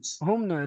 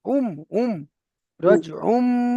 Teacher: দুপেশটাকে আপনাকে মিমের দ্বারা পরিবর্তন করে পড়তে হবে একালি পরিমাণ গুণনা করে। তাহলে আইন মিম পেশ উম।